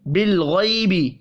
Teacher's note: لام ساکن پر قلقلہ نہیں کرنا، غین پر پڑھا جائے گا، حروف مستعلیہ ہے اور یہ یا لین ہے۔